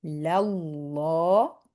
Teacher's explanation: when we join with a fatha or a damma, Allah's name is heavy